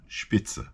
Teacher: in German if you have a uh s and then a consonant you're creating a sh sound